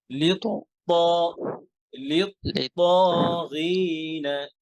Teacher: এই ত কিন্তু মোটা হবে, ত হ্যাভি হরফ